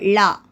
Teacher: நாவின் இரு பக்கங்கள் தடித்து மேல் அண்ணத்தின் நடுப்பகுதியை தொடுவதால் தோன்றும் எழுத்து